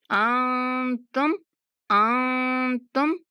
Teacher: नून की आवाज जो है वो छुपी सी अदा करनी है, ना तो सही से हम नाक में जाने देंगे, ना ही सही से मुंह से अदा करेंगे, दरमियान में उसको थोड़ा सा छुपा कर अदा करेंगे। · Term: इख्फा